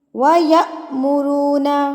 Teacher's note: حمزہ کے اوپر جب جزم آ جاتی ہے تو جھٹکا دے کے پڑھا جاتا ہے